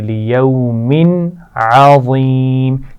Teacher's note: لیوم یہاں پر غنہ نہیں ہوگا اور قلقلہ بھی نہیں ہونا چاہیے